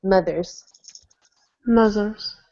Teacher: Instead of an open ah sound in mothers, make it more closed